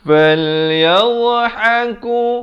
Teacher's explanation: dha makhrajnya di tepi lidah